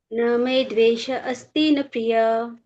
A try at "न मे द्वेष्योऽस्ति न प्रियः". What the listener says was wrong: न मे द्वेष्योऽस्ति न प्रियः। ट्राई कीजिए कि तो संधि को विच्छेद ना करें।